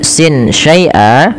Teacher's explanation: suara nunnya disamarkan kepada huruf setelahnya sehingga ya dia membaca antara izhar dengan idgham, yaitu tidak dimasukkan dan tidak diperjelas tapi di antara kedua-duanya. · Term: ikhfa hakiki